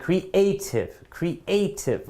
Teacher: the stress is definitely in the second syllable